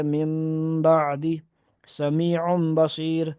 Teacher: قاعدہ نمبر 4 نون ساکن اور تنوین کے بغیر حرف با آئے تو اس نون ساکن اور تنوین کو میم سے بدل کر غنہ اور اخفاء کے ساتھ پڑھیں گے